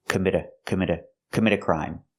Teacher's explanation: we hear the T in commit as a fast D.